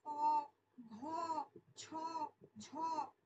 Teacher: মহাপ্রাণ বর্ণ যেটা দ্বিতীয় আর চতুর্থ, যেখানে নিঃশ্বাস যুক্ত হয়